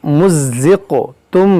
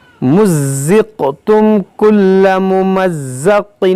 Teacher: یہاں پر قاف میں قلقلہ کریں گے، زا کو سختی سے پڑھیں گے